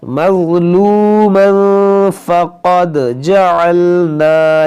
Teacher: وَمَن قُتِلَ مَظْلُومًا فَقَدْ جَعَلْنَا, یہاں پر دیکھیں ضا ہے, مظلومًا, میم ضا زبر مو, لام واو پیش لو, مظلو, میم دو زبر من, مظلومن, آگے تنوین کے بعد فا تو یہاں پر اخفا کریں گے